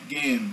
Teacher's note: Você vai ver que esse H no centro não é pronunciado, tá? O H no final do morfema, que o radical do verbo gehen é ge, né?